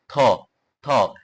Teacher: জিভ দাঁত ছুঁয়ে, জিভ আপনি থ, থ, আপনার জিভ উপরের দাঁতের মাড়ির সাথে লাগাবেন